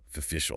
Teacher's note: It has three syllables. The stress is on the second syllable. · Because the first syllable o is unstressed. It reduces to schwa.